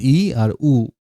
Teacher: সংবৃত হলো যেমন ই আর উ, হ্যাঁ? মুখটা বেশি আরকি খোলে নাই